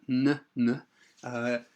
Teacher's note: Basically, the N sound, n, is with voice obviously coming through from the throat and the tongue touching the top of the mouth there, fairly close to the front. And the sound comes out through the nose